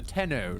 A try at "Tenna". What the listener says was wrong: 10A. 10A. 10A. There's an A on the end, not an O on the end. 10A.